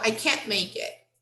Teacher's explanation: we hardly pronounce the final t